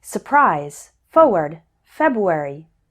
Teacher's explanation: when speaking fast, we often don't pronounce the R.